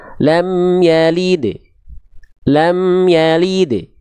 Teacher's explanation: tulis nama sifatnya adalah Q qolqolah nah Qalqalah nah qalqalahnya ini Qalqalah sugro karena dia berada di tengah ya Di pertengahan ayat bukan pada saat berhenti maka dipantulkan dengan ringan